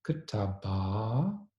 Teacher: So, “katabah” would have become “katabah.” Then, the initial vowel would have reduced to schwa, such that it would have become “ktabah,” and finally, the second a-vowel of the original word would have lengthened two. · In contrast, in Hebrew would have begun basically from the same starting point, but in Hebrew, you can see that initially the last vowel would have lengthened, so kataba would have become kataba. Then the initial vowel would have reduced to schwa, such that it would have become kutaba.